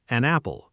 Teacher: The N from an links directly onto apple. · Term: linking